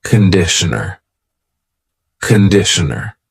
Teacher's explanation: The first vowel is a schwa.